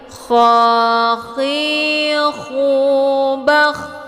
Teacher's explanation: huruf kha ini dia tempat keluarnya dari tenggorokan bagian atas. Cara mengucapkan huruf kha ini, yang pertama rongga tenggorokan bagian atas itu sedikit menyempit. · Cara mengucapkan huruf kha ini, yang pertama rongga tenggorokan bagian atas itu sedikit menyempit. Kemudian posisi lidah bagian belakang itu naik ke langit-langit, sedangkan ujung lidahnya yang bagian depan dia tetap merendah. Jadi bunyi kha ini dia suaranya kotor seperti bercampur air.